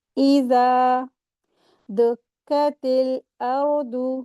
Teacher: یہاں پر را ساکن، اس سے پہلے زبر ہے، تو را کو ہیوی کر کے پڑھیں گے